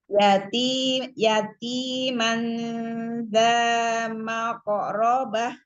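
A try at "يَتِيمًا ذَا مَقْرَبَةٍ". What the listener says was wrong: Jangan diseret. Mako, makorobah, makorobah. Coba diulang sekali lagi, pelan-pelan. Makorobah, makorobah. Itu ya, Umi, itu ya jangan itu ya catatannya tadi ya, jangan ketika bertemu huruf qalqalah, jangan diayun ya, jadiin,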